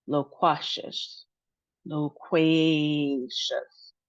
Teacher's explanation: we have three syllables and then we have our emphasis on the middle syllable with the Q. In addition to that, we have two long sounds. · we have 2 long sounds. So low instead of la. And then we have way instead of just qua.